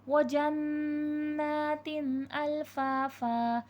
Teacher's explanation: تا دو زیر تین، تنوین میں غنہ ہوتا ہے لیکن اس میں اظہار ہوگا، تنوین میں غنہ نہیں ہوگا، کیونکہ تنوین کے فوراً بعد حرف حلقی آ گیا ہے · جنات، نون مشدد کا غنہ ہے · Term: اظہار حلقی